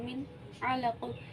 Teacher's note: نون ساکن کی آواز کو ہم نے ظاہر کر کے پڑھا ہے کیونکہ یہاں پہ اکفا یا غنہ نہیں ہوگا۔ یہ واحد 6 حروف ہیں جہاں پہ اکفا یا غنہ نہیں ہوتا، ہم نے ظاہر کر کے پڑھنا ہوتا ہے حرف کو۔ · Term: اظہار حلقی